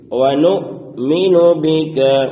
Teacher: حمزہ ساکنہ جس حمزہ پر جزم ہو تو اس حمزہ کو پڑھنے میں جھٹکا ہوتا ہے، تو یہاں پر جھٹکا دے کر پڑھیں گے۔